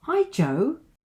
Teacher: And the fall rise intonation. This indicates that I'm expecting to see Jo and I'm pleased to see her or him.